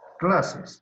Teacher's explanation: clases, lleva el acento en la penúltima sílaba. Aquí está la última y esta es la penúltima.